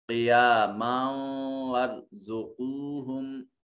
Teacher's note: را مفخم ادا کیا جائے گا، را ساکن ما قبل مفتوح ہے اس وجہ سے